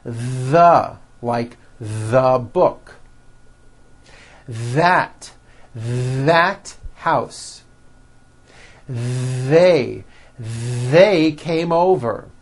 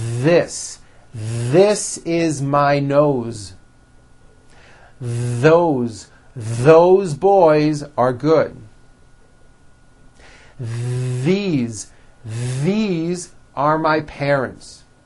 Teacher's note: they should all be voiced and all made with your tongue coming through your teeth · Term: voiced TH